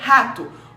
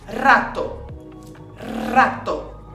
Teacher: É um R mais vibrado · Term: R forte